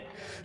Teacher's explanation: It can either be silent, or what I would call a very short E. It's barely a sound at all. It's just a little eh. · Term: shva